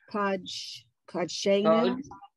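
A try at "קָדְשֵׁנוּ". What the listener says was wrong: It's an O sound.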